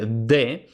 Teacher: el fonema D, que se pronuncia dental, oclusivo